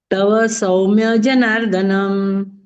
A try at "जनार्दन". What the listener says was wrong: जनार्दनम कहाँ दिख रहा है आपको?